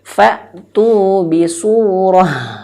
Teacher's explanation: ketika ta marbutoh, ketika dia waqaf, maka jadikan ha besar